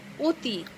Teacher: এখানে অ বর্ণটির উচ্চারণ ও এর মতো হয়েছে।